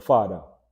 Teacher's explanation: when you feel that vibration when you're pronouncing that TH, when you're replacing that TH sound in Jamaican Creole, you don't use a T, you use a D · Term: voiced TH